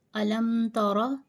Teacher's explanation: Ra, if Ra carry a zabar, pronounce it with a thick tone.